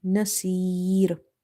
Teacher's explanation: Swad is from the musta'aliya or the heavy letters. That's why the kasra is not affecting it at all. We have to read it heavy.